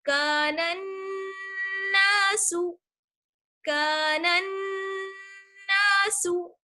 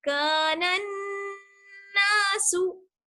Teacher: ایک الف کے برابر ٹھہریں گے اور آواز جو ہے ناک میں چلی جائے گی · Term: غنہ